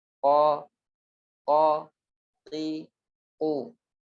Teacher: ketika mengucapkan fathah yang tebal kita lebih mendekatkannya kepada pengucapan huruf o, akan tetapi tanpa memonyongkan bibir. Jadi jangan sampai o. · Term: sifat tebal